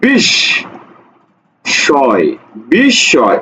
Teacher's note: এই যে মফলা কখনো উচ্চারণ হয় না, মফলা উচ্চারণ হয় না